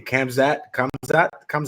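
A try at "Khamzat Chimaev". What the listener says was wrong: Hamzat. Don't say the K. Kamzat Chimaev. and if you want it to be politically correct, it's Kamzat Chimaev. Kamzat Chimaev.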